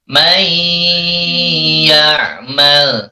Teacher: Maka nun sukunnya hilang, tidak terbaca lagi. Masukkan ke ya, may ya'mal, serta ditahan. Nyebutnya didengungkan dan ditahan. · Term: idgham biguna